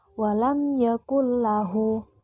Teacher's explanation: idgham yang dibaca tanpa dengung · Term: idgham bilagunnah